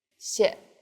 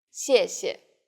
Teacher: and the second syllable is the neutral tone